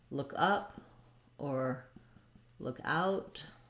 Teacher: we stress on the preposition rather than the um the verb because that's what gives the phrasal verb its meaning so if i just say look look is more important it's